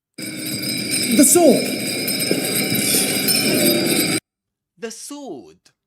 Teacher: Did you know that in this word the W um is silent?